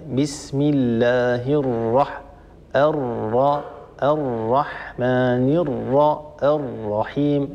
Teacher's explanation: هذه راء مشددة، والراء المشددة هي تتألف من راءين كما هو معروف، أولاهما ساكنة وثانيتهما متحركة